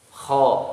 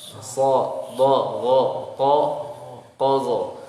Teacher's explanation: huruf-huruf ini dibaca dengan tebal, suara mengalir ke atas, pangkal lidah naik ke atas